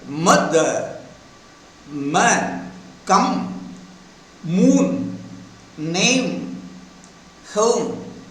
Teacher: So this phoneme is called voiced bilabial, two lips, bilabial nasal. Voiced, the vocal cords vibrate, so voiced. Two lips are brought together, so bilabial. · Voiced, the vocal cords vibrate, so voiced. Two lips are brought together, so bilabial. The air comes out through the nose, so bilabial nasal.